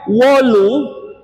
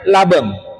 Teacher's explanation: Jadi kalau begitu huruf W bahasa Jawa, huruf B bahasa Madura. Antara W dan B kalau dikaji dari sisi bahasa akademik itu huruf bilabial, huruf bibir.